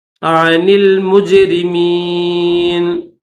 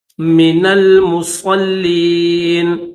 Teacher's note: نون کو لام کے ساتھ ملائیں گے، درمیان میں الف نہیں پڑھیں گے